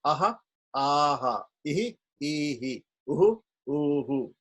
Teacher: We do it a short vowel before becomes a short vowel after. The echo is short. A long vowel before, the long echo afterwards.